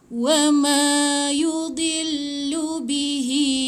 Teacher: Ingat, masukkan di kat lam. Hi panjang 4 atau 5 harakat.